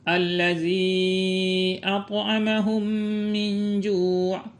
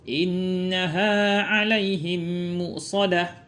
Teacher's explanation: dinamakan idgam karena huruf mim sukun masuk ke dalam huruf mim berharakat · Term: idgham mislain shagir